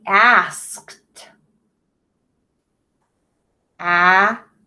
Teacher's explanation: That T sound is made by that ED at the end of the word because remember your K is an unvoiced sound.